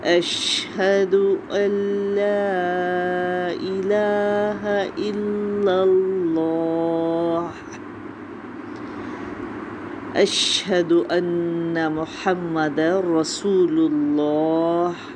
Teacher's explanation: لیکن اسم الجلالہ کے دونوں لام مخفم ہیں، موٹے پڑے جائیں گے، اور پھر ہا پر وقف ہوگا تو ہا کی آواز کو کلیئر کرنا ہے۔